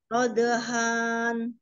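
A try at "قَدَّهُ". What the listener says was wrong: jangan dihan, jangan dipanjangi, kodohan,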